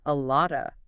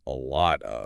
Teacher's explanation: The moment you try to pronounce that F sound, you create a stop, a little bump, and native speakers just smooth that out.